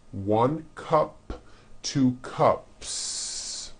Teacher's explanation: if you add an S to the word cup to make it plural, the S you add also remains unvoiced